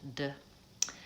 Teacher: alveolar placement, that's where the tongue is behind the teeth